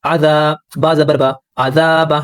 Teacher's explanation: یہاں پر بھی الف حروف مدہ ہے، الف سے پہلے زبر ہے، زبر کو کھینچیں گے دو حرکات کے برابر